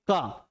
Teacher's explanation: जिसके उच्चारण में हवा कम खर्च होता है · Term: अल्पप्राण